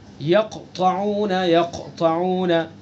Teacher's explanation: جیسے یقطعون، یقطعون، اب قاف ہے یہاں پر، قاف کے اوپر پہلے سے سکون ہے تو یہ تیسرے درجے کا قلقلہ ہوگا